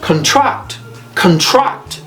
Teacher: when it's a verb guess what happens it the the stress is on the second syllable now